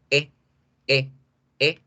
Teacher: Ejemplo, la E seca o la E normal o la E corta se dice igual que se dice en español, E. No alargo el sonido, es supremamente corto